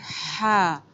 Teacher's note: حلق کے درمیان سے جہاں سے ابری ہوئی ہڈی نظر آتی ہے جینٹس کی، لیڈیز کی نہیں ہوتی، تو اس جگہ آپ انگلی رکھ کے اپنا ادا کریں گی ہا، اور سیم اسی جگہ سے ادا ہو جائے گا عین۔